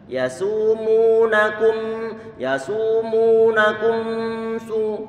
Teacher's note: Gak boleh terus dalam keadaan monyong, tapi segera untuk ditarik karena memnya dalam kondisi sukun.